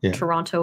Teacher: could tell though is how people pronounce the word Toronto because people from outside of Toronto or outside of Ontario would probably pronounce it as it's spelled Toronto yeah with a t sound